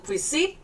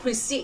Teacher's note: nhấn âm tiết thứ hai